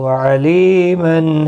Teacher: علی یا مدہ ہے، ایک الف کی مقدار کے برابر کھینچ کر پڑھیں گے۔ تنوین کے بعد حروف حلقی کا حا ہے، اظہار حلقی ہوگا۔